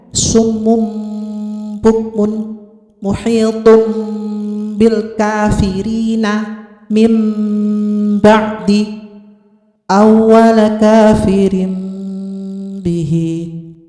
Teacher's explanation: Yang keempat yaitu hukum bacaan iqlab, yaitu apabila nun sukun atau tanwin berhadapan dengan huruf ba, maka nun sukun atau tanwin dibaca beralih menjadi m